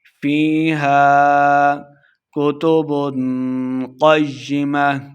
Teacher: فی یا مدہ ہے، 2 حرکات لمبا کریں گے. ہا کے آگے الف ہے، الف مدہ ہو رہا، 2 حرکات لمبا کرتے ہوئے پڑھیں گے